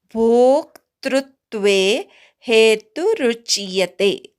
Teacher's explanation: मूळ शब्द दुःख असा आहे. भोक्तृत्वे भो पूर्ण म्हणायचा मग अर्धा क म्हणायचा त्रूवर आघात घ्यायचा